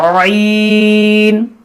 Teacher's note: اس کو ہمیں بیچ زبان حلق کے درمیان سے ادا کرنا ہے. عین یہ تھا ہا اور یہ عین, ان دونوں کا مخرج ایک ہی ہے.